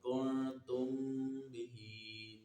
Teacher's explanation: میم ساکن کے بعد با ہے، با آ رہا ہے تو یہ اخفاء شفوی ہے، اخفاء شفوی میں غنہ کر کے پڑھیں گے